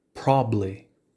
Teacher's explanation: The ba in probably drops out